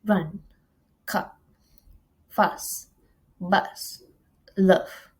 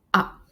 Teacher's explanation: Next is the sound ah, a low mid-center vowel sound, pronounced in the back of the vocal tract with the tongue half open and the lips in a unrounded position